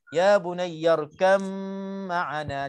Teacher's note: Di sini pun idgham mutajanisain, ba dengan mim tempat keluarnya 2 bibir mulut, mana Ba itu diidghamkan terus masuk ke dalam mim dengung